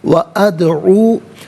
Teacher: یہاں پر بھی دال ساکن ہے لیکن حرف قلقلہ ہے تو آواز لوٹتی ہوئی محسوس ہونی چاہیے۔